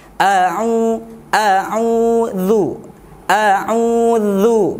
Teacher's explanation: pemah setelahnya kemudian ada huruf yang berharakat sukun wau sukun maka hukumnya adalah Mad Thobi'i atau mad asli panjangnya dua ketukan dua harokat contohnya Aa dibaca a bet Kak jangan lebih dari itu jadi